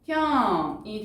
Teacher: 자, 맏형은요, 여러분, 디귿, 히읗. 디귿과 히읗이 만나서 티읕으로 줄어들었죠. 그래서 마형이 되고요. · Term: 거센소리